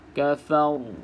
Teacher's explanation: tengok dekat sini Ok dekat sini ni bacaan ra dekat sini bacaan ra yang tebal sebab Apa sebab ra sukun sebelumnya berbaris di atas yang huruf Fa Ni Fa ni baris di atas jadi kena